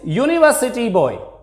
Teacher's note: This U in this word university boy produce a ya sound, and ya is a consonant. Before consonant sounds we use a, and before vowel sounds we use n.